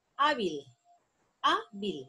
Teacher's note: La sílaba tónica está en A.